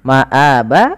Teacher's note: a-nya kita hukumi dengan mad badal, maka panjangnya 2 harakat